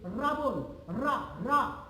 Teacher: যখন আমরা র উচ্চারণ করি আমাদের জিহ্বার অগ্রভাগটা সামান্য কেঁপে ওঠে।